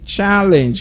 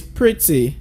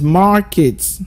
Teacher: words where the first syllable is being stressed